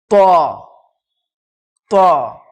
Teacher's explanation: তটা একটু মুখ ভর্তি করে হবে। ত, জিহ্বার আগা এবং সামনের ওপরের দুই দাঁতের গোড়ার সাথে লাগিয়ে উচ্চারিত হয় ত